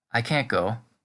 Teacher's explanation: The T on the end is completely gone. There's really only a difference in tone that differentiates the two versions.